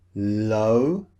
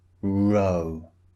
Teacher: the first sound L the mouth neutral position the tongue against the towards the back of the teeth and the second sound R the lips pushed out and the tongue curled back